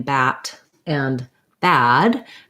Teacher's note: that's the most open of the front vowels so we might call that open an open front vowel so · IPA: æ